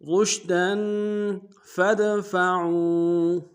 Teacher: دال حروف قلقلہ سے قلقلہ کریں گے